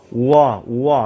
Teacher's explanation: 와도 천천히 발음하면 어떻게? 오와 앞에 오가 살짝 나잖아요